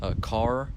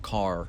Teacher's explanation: There's the alveolar one, and then there's the retroflex one.